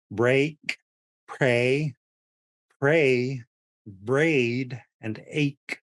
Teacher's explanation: you're making your mouth a little bit wider to pronounce the a sound a flat a